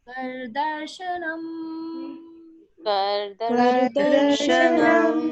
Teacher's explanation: मकार अधूरा है तो हमारा मुख बंद हो जाएगा